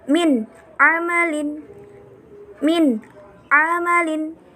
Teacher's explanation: Jadi kita baca nun sukunnya dulu, baru kita baca a-nya. Jadi ada jedanya.